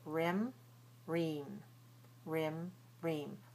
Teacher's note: Lax rim. Tense ream. And that tension is also in side in the tongue. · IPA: /ɪ/